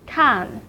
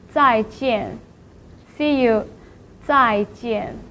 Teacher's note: It's a falling tone, start from the highest part of a voice and then go down as if it's claiming. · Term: fourth tone